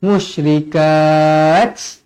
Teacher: Kalau berhenti, pastikan ta ni ta berangin, ta hamas